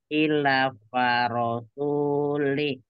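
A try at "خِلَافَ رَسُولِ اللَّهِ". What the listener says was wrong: la-nya panjang juga ya. Ada tanda alif atau apa di sana? Ila fa rasulillah.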